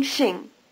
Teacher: Shing is pronounced with the tongue farther forward and with the lips spread